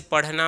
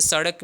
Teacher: यानी देखिए, उत्क्षिप्त का मतलब यह है कि इन वर्डों को बोलने पर हमारी जो जिह्वा है वह बाहर की तरफ फेंकती है, तो उसे उत्क्षिप्त व्यंजन कहते हैं।